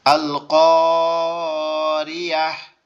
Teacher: তাটাকে হা দ্বারা পরিবর্তন করে পড়তে হবে